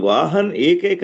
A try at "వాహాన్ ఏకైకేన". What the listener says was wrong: వాహన్ చదవకూడదు, వాహన చదవాలి. వాహన ఏకైకేన. చతుర్భిశ్చతురో వాహాన్. అక్కడ వాహాన్ వాహాన్ చతుర్భిశ్చతురో వాహాన్ ఏకైకేన చ సారథి.